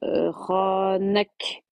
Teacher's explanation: on bloque le son. On fait un petit souffle comme le t comme le ta.